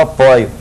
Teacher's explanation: Mas ó, é um ditongo a sílaba tônica, é um ditongo oi, cuja base, cuja vogal é de timbre aberto, então eu apoio tem acento, olha lá, eu apoio.